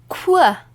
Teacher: You can almost hear two sounds here. K and W. Put it together.